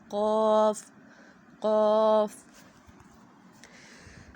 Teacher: ہے، ٹھیک ہے، کیونکہ اس کے مخرج ہی یہی ہے کہ ہم نے زبان کی جڑ کو اوپر کی طرف اٹھانا ہے، تالو کے ساتھ چپکانا ہے، نرم تالو کے ساتھ ، تو یہاں پہ ہم قاف ہمارا موٹا ہو جائے گا،